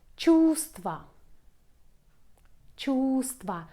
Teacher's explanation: We pronounce only the second v.